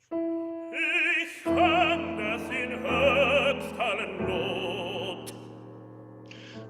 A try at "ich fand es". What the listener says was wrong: Ich fand es. So you're gonna have a T instead of the D, and then you're gonna have then that'll set up the nice separation you need to make sure we hear that.